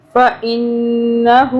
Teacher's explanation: نون کے اوپر تشدید ہے تو 2 سے 3 سیکنڈ کے لیے نون کو ہم ناک میں رکھیں گے